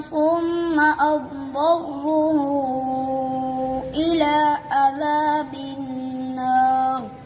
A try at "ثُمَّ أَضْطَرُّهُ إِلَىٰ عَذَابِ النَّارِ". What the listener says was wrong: आपने सुम्मा पे गुन्ना भी छोड़ दिया और अब दर्रु पढ़ दिया आपने हाँ सुम्मा से पढ़ो